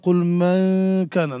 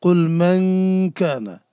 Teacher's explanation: কাফ আর কাফের কাছে যে ইখফাটা হয় সেটা হয় আকরাব ইলাল ইজহার